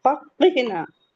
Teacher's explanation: एकदम जबान की जड़ लास्ट पार्ट से निकलता है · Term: कौफ